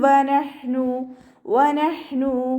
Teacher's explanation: ഹ കൽക്കല ലെറ്ററില്ലാത്തത് കൊണ്ട് ഹാഫ് സുക്കൂന് കൊടുക്കുക. · നൂൻ സാക്കിനയ്ക്ക് ശേഷം ഇവ്ഹാറിൻ്റെ അക്ഷരമായിട്ടുള്ള ഹ വന്നതുകൊണ്ട് നൂൻ സാക്കിനെ നമ്മൾ വ്യക്തമാക്കി മണിക്കാതെ ഓതിക്കൊടുക്കുക